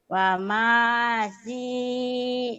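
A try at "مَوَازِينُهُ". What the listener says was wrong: terbalik Bu, mawa bukan wama, mawa terbalik. Mawazinuhu kemudian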